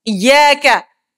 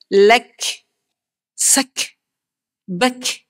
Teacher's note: Huruf kaf. Hanya ada angin bila dia mati. Hidup jangan bagi angin.